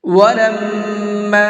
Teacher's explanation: میم کے اوپر تشدید ہے تو یہاں پر غنہ کر کے پڑھیں گے